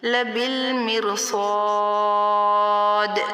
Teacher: را کو ہم پر نہیں کریں گے کیونکہ را ساکن سے پہلے زیر آ رہی ہے